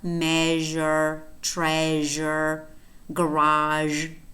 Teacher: However, I think it's easier for us to pronounce sh, because we could say sh, but Z we never use. Z, is voiced and is post-alveolar.